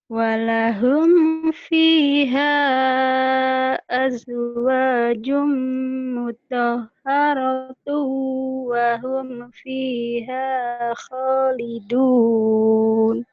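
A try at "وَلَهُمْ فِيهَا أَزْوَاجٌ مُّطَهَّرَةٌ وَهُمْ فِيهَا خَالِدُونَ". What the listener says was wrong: Ya, napasnya masih digeret ya. Walahum fiha azwajum mutahharatu wa hum fiha. Wa hum fiha khalidun. Bagi dua aja. Atau azwajum mutahharah.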